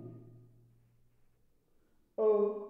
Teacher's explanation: अ हा आपल्या कंठातून बाहेर निघल्यासारखा त्याचा एक स्वर आहे.